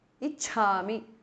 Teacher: एतत् to changes to the because of sandhi. Ichhami, cha is mahapranah.